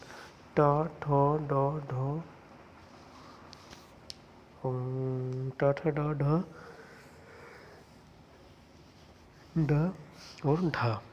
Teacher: इन व्यंजनों के उच्चारण में जीभ पहले ऊपर उठकर मूर्धा को स्पर्श करती है, फिर झटके से वापस आती है। उन्हें उच्छिप्त व्यंजन कहते हैं।